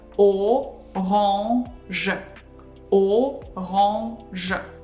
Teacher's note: we pronounce je sound voiced after we pronounced the nasal sound. Otherwise, it's gonna sound like this, orange.